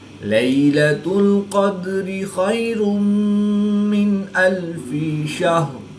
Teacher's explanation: دال ساکن ہے، تو یہاں پر قلقلہ صغریٰ کر کے پڑھیں گے